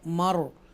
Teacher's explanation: मर, रॉ साकिना है, रा जो है वो साकिना है लेकिन ज़बर की वजह से पुर पड़ा जाएगा